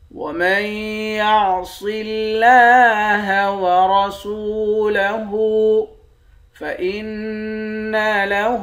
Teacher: نون مشدد پر غنہ کریں گے، ہاں پر الٹا پیش ہے، ایک الف کی مقدار کھینچیں گے